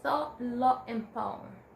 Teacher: very dark, pulled back sounds in words like thought, lot, and poem